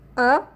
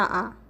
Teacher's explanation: तो आपका छोटा अ जो है अर्ध विवृत्त में आएगा और बड़ा आ जो है विवृत्त में आएगा